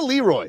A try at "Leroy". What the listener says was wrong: He put the wrong emphasis on the wrong syllable.